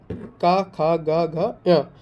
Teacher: का उच्चारण कहाँ से होता है दोस्तों? कंठ से